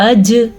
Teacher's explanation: میں نے پھر جیم پہ کلکلا کیا کیونکہ جیم بھی حروف کلکلا میں سے ہے